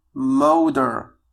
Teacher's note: فهنا تي قمنا بنطقها على أساس أنها دي، وهذا ما يسمى في اللغة الإنجليزية بالفلاب تي. فالفلاب تي هي أننا عندما تأتي تي بين two vowels تنطق على الشكل دي.